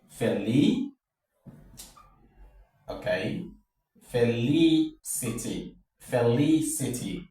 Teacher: the pitch of your voice should go higher when you get to the third syllable from the end of the word